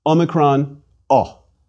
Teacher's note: a closed o as in the British pronunciation of pot